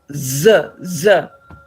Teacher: you say that Z is a voiced sound because it demands this vibration